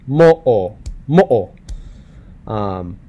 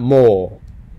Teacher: But an okina, like in the word mo'o, it's that pause in between the first o and the second o. Mo'o, mo'o, not mo, mo'o.